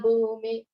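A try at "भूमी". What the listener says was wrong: the first line, that Bhumi is a long E, okay?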